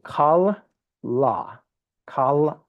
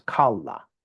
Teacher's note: you put emphasis on the last syllable